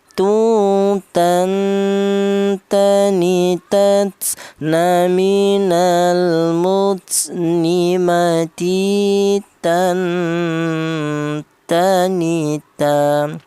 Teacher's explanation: Huruf mem ini keluarnya huruf berasal dari kedua bibir yang rapat ya, sudah. Huruf ta keluarnya huruf berasal dari ujung lidah menyentuh pangkal gigi seri bagian atas